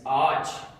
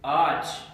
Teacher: The purpose of yumuşak G is kind of to fuse these two vowels together. So you do not pronounce it once, but as if you pronounce this point in like a one syllable.